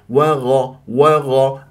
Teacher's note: الغين مفخمه مرتبه ثانيه مفتوح من احرف الاستعلاء